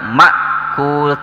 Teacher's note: Di sini juga sebut idgham bigunnah, tanwin menghadapi huruf mim. Ma'kul ya, ma di sini pendek karena ada hamzah ya. Tapi jangan terlalu ditekan juga.